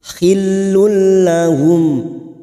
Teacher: tanwin bertemu huruf lam namanya Idam bila gunah hanya masuk tanpa mendengung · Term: idgham bila gunah